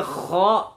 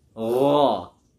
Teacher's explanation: Kha agak ke depan dikit, agak mau keluar dikit. Kalau gha ada yang paling belakang.